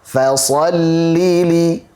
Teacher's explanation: Di fa tipis, sad tebal.